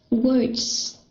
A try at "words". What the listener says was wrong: Okay, it is a Z sound, right? Words, words, words. Okay, it's a Z sound and it's very light. Words, words. Just try not to overemphasize when you're reading, right?